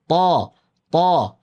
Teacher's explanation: তো ঠোঁটটাকে গোল করলে হবে না, তো না, কিন্তু ত, মুখ উপরে নিচে খুলবে কিন্তু ঠোঁট গোল হবে না